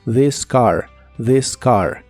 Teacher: La TH de this se pronuncia como una D vibrante